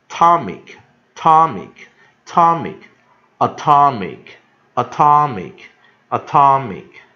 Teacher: 它是三个音节的字，但重音在二音节